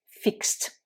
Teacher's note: Vous ajoutez ed, et là, le ed se prononce t.